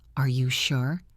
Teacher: Listen to the intonation. It goes up.